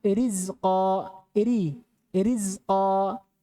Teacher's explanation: Keadaan di mana ra dibaca tipis.